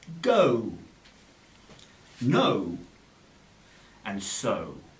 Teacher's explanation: say the sound because they combine the two vowel sounds so as you say the o sound your mouth will start on the position of uh and close a little and become more rounded as you finish on the position of the uh or ooh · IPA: əʊ